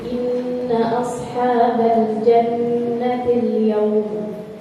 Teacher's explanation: Inna di situ ada tasydid ya Bu, nun bertasydid. Kita baca pakai gunnah